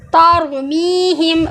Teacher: تا باریک پڑھتے ہوئے را کو گول پڑھیں گے۔ ترمیہم، اور جب بھی کسی الفابیٹ کو گول پڑھنا ہے تو اس کو پڑھنے کے وقت آپ ہونٹوں کو گول کر لیں تو کیا ہوگا، وہ اپنے آپ ہی گول ہو جائے گا۔